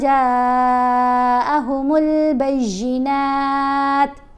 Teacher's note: وقف کرنے کی صورت میں تا ساکن پڑھی گئی، اس کے اوپر جو پیش ہے وہ نہیں پڑھی جائے گی